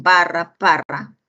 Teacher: Solo de la oclusiva bilabial tendríamos barra, parra